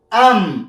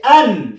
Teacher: دلته د نون ساکن په میم ساکنه بدلیږي. صحیح شو څنګه ام مخکې مو چې ان اوس به وایو چې ام. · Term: اقلاب